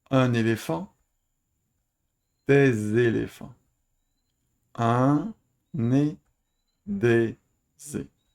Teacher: on entend le pluriel par la liaison avec l'article